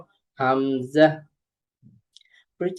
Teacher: কন্ঠনালীর শুরু হইতে উচ্চারিত হয় হামজা।